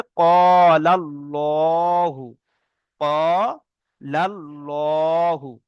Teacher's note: আল্লাহর শব্দের আগে যদি জাবার থাকে তাহলে আল্লাহর লামকে পুর অর্থাৎ ল পড়তে হবে।